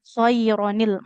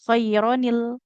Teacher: Ujungnya kan an in un nah ada bunyi nun sukunnya. Nah, bunyi nun sukunnya diubah jadi nun kasrah